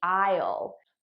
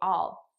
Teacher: notice how i'm actually saying all which is the unstressed pronunciation the stress pronunciation would be i'll but naturally i would just say all